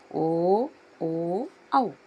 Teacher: ಕಂಠ ಮತ್ತು ಓಷ್ಠ ಅಂದ್ರೆ ಕಂಠ ಮತ್ತು ತುಟಿಗಳ ಸಹಾಯದಿಂದ ಉಚ್ಚಾರವಾಗುವಂತಹ ಅಕ್ಷರಗಳು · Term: ಕಂಠೋಷ್ಟಗಳು, ಕಂಠೋಷ್ಠಗಳು